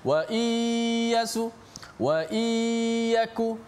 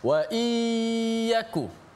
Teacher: Wa iyyaku, dia tak betul-betul masuk hidung dan masuk mulut, masuk kalau di mulut masuk iya lah, huruf iya lah, nun masuk dalam iya, di hidung masuk gunnah